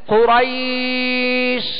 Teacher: شین کو ادا کرتے ہوئے آواز منہ میں پھیل جائے، آواز منہ میں پھیل جائے.